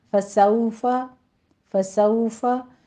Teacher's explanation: فسوفا میں واو لین ہے، ہونٹوں کو ناتمام گول کرتے ہوئے ادا کیجئے